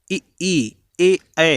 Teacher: देखिए जीभ का अगला हिस्सा आपका उठ रहा है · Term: अग्रस्वर